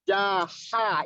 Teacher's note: Ya, jadi jaha, ingat ha tipis dan bersih.